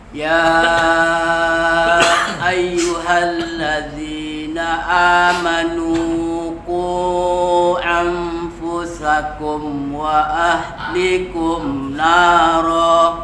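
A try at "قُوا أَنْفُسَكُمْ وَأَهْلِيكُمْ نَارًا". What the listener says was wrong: Ya, linya panjangkan. Panjang. Ya, tadi pendek. Aufu juga ya. An nun bertemu dengan fa disamakan ke cenderungnya ke fa. Mulut kita membantu huruf setelah nun atau tanwin tadi. Aufu. Jadi mulut kita membentuk fa langsung. Fa. Aufu. Aufusakum.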